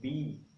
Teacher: तो हमारे जो दोनों लिप्स हैं एक दूसरे से सटते हैं